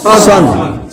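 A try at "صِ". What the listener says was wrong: সদ দুই পেশ সদ জের সিন, সিন বললে সিনের উচ্চারণ হয়।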